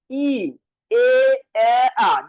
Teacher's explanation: দেখেন ঠোঁটটা ছোট থেকে বড় হচ্ছে